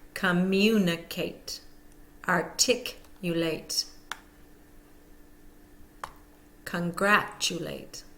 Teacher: B most longer words that end in a a t e will have the primary stress on the second syllable